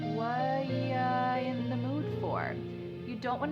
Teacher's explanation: The word are is gone. And the word you has been reduced to y. So when we link together what and you super fast.